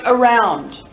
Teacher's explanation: you really put the emphasis on the second syllable you barely hear the first syllable